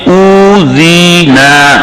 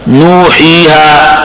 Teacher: ان سب الفاظ میں واو، یا اور الف مدہ ہیں، اور یہ تینوں حروف منہ کے اندر خالی حصے سے ادا ہوتے ہیں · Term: حروف مدہ